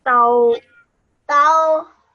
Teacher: That means you say ta and then you round your shape onto the vowel.